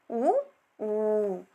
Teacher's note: ತುಟಿಯನ್ನು ಬಳಸಿ ಉಚ್ಚರಿಸುವಂತಹ ಅಕ್ಷರಗಳಾಗಿವೆ ಆ ಕಾರಣವಾಗಿ ಇವುಗಳನ್ನು ಓಷ್ಠ ಅಕ್ಷರಗಳೆಂದು ಕರೆಯಲಾಗಿದೆ ಅನುನಾಸಿಕ ಇಲ್ಲಿ ಅನು ಎಂದರೆ ಸಹಾಯ